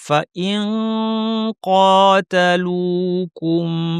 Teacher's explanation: কফের মাখরাজে জিহ্বা লাগিয়ে নাক থেকে গুন্না করব।